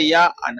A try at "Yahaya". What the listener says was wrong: No, pronounce the H hard.